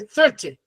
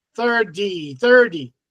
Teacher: The British, they say 30, because it has a T, but the Americans have a D, 30.